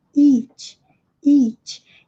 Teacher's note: E aqui é o nosso I, com os lábios estirados, mais longa a fonação.